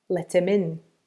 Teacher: We drop the H on him and we link it to let him, let him. And we also add a link between him and in, let him in.